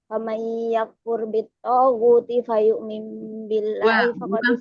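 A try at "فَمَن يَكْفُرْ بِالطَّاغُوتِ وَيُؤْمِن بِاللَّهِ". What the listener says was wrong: bukan fa ya. Wa yu'min billah.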